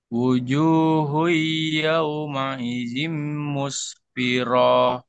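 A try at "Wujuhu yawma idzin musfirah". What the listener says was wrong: Kenapa panjang ayo? Muspiro. Ada yang manjangin nggak? Nggak ada Nggak ada. Jadi nggak boleh panjang.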